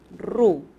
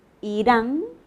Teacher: la primera es la vibrante múltiple, ru. Irán, ¿cómo suena? A una vibrante simple.